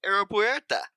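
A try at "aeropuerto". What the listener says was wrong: now you gotta roll the R though.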